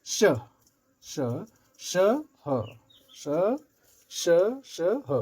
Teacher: रगड़ हो रहा है, घर्षण हो रहा है और उस पर वायु, तो इसे उष्म व्यंजन कहते हैं